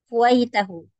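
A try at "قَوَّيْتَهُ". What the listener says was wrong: bukan ku kenapa ku fa'ala wawunya tasydid qaw qawaitahu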